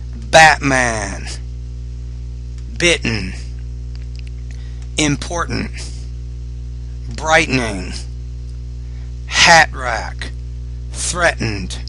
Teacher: Okay, the sound that's hard for you, we have this sound in English, it's called the glottal stop in these words. We don't really pronounce the T in the middle, we say Batman.